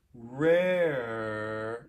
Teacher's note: most americans will make the r after the vowel lighter sort of looser easier